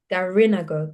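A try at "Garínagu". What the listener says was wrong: Yeah, the accent will be, or the stress is gonna be on the I.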